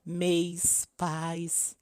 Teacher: a inclusão de uma semivogal ao lado de uma vogal já existentes formando um ditongo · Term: ditongação